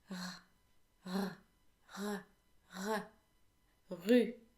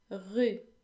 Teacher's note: the French R comes from the throat and it is pronounced as if you were gargling, but without water. The tip of your tongue needs to rest against your bottom front teeth and the back of your tongue needs to be slightly rounded.